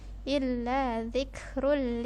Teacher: Perhatikan, wa ma 2 harokat, huwa illa 2 harokat juga, illa ini pakai huruf dzal. Ini huruf dzal ya, di ujung lidah, bukan zi atau ji